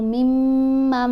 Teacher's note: میم کے اوپر ہم نے غنہ کرنا ہے، یعنی آواز ناک میں جائے گی، ایک حرکت کے برابر ٹھہرا جائے گا۔ یہ والا نون خاموش ہے، اس میم کو میم کو اس میم سے ملایا جائے گا۔